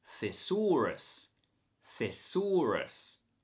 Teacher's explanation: the first syllable has a voiceless th sound it's f it's not a voiced th sound the this word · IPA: /θɪ ˈsɔː rəs/